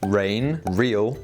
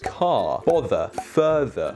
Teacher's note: I am non-rhotic speaker this means that I only pronounce this R sound at the start of a syllable for example rain real everything otherwise I don't pronounce this sound